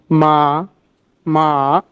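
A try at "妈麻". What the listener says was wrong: perfect but second রুমটা একটু উপরে উঠবে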